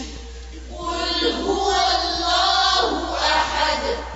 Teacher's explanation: پیش پر واو پر ہونٹوں کو گول کرنا نہیں بھولنا